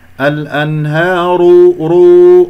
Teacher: والراء مفخمة لأنها مضمومة